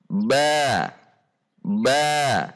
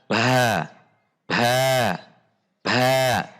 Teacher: saat membunyikan huruf ba ketika berharokat tidak dengan mendorong udara dari dalam rongga mulut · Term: al-jahra